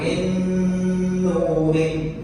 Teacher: Kemudian gunnah artinya dengung. Setelah dimasukkan, dijadikan satu. Cara yang kedua harus didengungkan, ditahan menjadi min nurin.